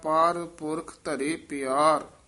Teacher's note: ਪਰ ਪੁਰਖ ਕੱਠਾ ਨਹੀਂ ਕਹਿ ਦੇਣਾ ਵੱਖਰਾ ਵੱਖਰਾ ਬੋਲਣਾ